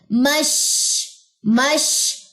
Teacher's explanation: शीन में तफशी की सिफ्त है, आवाज फैलेगी